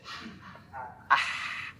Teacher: kalau suara orang kepedesan gimana sih? Ah, tanpa ada getaran. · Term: huruf ha